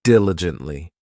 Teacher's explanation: This adverb has four syllables and the stress is on that first syllable,